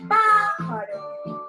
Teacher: En la palabra pájaro, la sílaba tónica es pa, mientras que las otras dos son las sílabas átonas